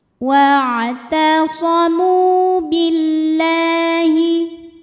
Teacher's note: Lam pada lafaz Allah atau lam jalalah dibunyikan secara tarqiq, sebab huruf sebelumnya ini berbaris di bawah, yaitu berbaris kasrah. Maka cara bacanya tipis, bunyinya lah, billahi.